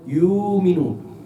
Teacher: no leen yu'minun con la hamza, sino leen yu'minun. Alargan la waw